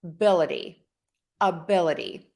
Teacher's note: Typically, when we have a word, the syllable stress remains the same no matter what prefix or what suffix we add to that word. However, with the ity, which we are going to pronounce as a D, we are going to shift that syllable stress right before that ity.